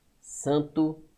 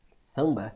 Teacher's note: Com certeza é um m ou n nasalizando uma vogal anterior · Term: dígrafo vocálico